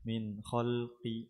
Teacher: نون ساكنة مظهرة قبل الخاء المفتوحة